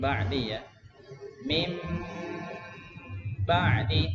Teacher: Nakis ya, karena dengungnya itu miliknya nun ya, bukan ba ya. Ba enggak ada dengung.